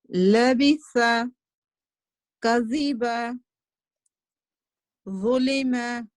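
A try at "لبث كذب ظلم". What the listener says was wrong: Ahsanti, mashallah, that was good.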